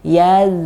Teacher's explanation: Dan hati-hati di ujung lafadz zal yang sukun jangan sampai mantul sedikit pun. Yaz. Jangan ada e-nya, ya.